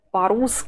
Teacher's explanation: the last vowel as usual the vowel that is not stressed loses some of its length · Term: reduction